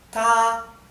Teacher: el tono tiene que estar alto ta y no varía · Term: tono alto